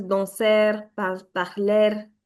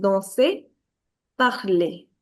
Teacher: There is no r sound in the end.